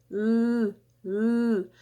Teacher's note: minha língua se aproxima lá do céu da boca, mas a corrente de ar escapa pelos lados da língua. Então, existe uma passagem livre dessa corrente de ar. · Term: modo lateral